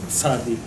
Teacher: So tzaddik, you just kind of blend them together. You put your tongue at the back of the teeth, just like you're going to make the t sound, and then say a z sound instead. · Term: tz sound